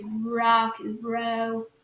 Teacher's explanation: O R no inglês americano ele é sempre mais forçado, ele é sempre mais pronunciado